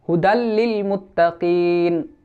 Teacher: আসছে তাই এখানে গুন্না হবে না গুন্না ছাড়া এদগাম হবে যে নুন সাকিন কে আমরা পড়বো না আমরা পরের হরফের সাথে মিলাইয়া পড়বো গুন্না ছাড়া